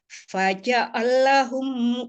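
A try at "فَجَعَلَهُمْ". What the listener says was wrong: jangan dijeda faja'alahum. Nah, jangan faja'alahum kan ainnya ngalir.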